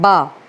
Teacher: बा बोलते वक्त हमारे ओठ आपस में चिपकते हैं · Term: ओष्ठ